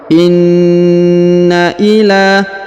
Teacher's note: Perhatikan huruf na ditahan dan ditekan karena terdapat tanda tasdid, ya. 2 harokat.